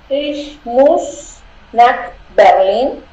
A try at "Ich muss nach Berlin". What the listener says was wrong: Perfecto, muy bien.